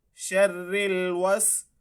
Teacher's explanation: रा की आवाज़ बारीक ही रहेगी क्योंकि हमने रा की जो आगे वाली हरकत है उसको देखना है, पीछे वाली को नहीं देखना